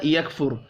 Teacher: را ساکن سے پچھلے حرف کے اوپر پیش ہے، را کو پر پڑھیں گے